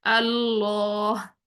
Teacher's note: अल्लाह के लाम को मोटा पढ़ते हैं